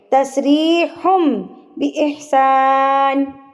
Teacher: اگر نون تنوین اور نون ساکن کے بعد با آ جائے تو جو تنوین کی یا نون کی جو ساؤنڈ ہے نا وہ میم میں تبدیل ہو جائے گی. اس کو کہتے ہیں اقلاب.